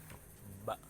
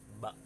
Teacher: Lalu yang kedua ada huruf ba, yaitu keluar dari dua perut bibir sebelah dalam. Ba dari dalam, ba dari dua bibir lalu keluar dari dalam, ba.